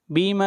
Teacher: اور اس مد کو 3 الف کے برابر کھینچ کر پڑھیں گے۔ بیما اسلفتم فیل، تم فیل، میم کو ظاہر کر کے پڑھیں گے، یہاں پر اظہار ہوگا، فی الایام الخالیہ، خالیہ، خا کو موٹا پڑھیں گے، خا حروف مستعلیہ میں سے ہے۔ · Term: مد منفصل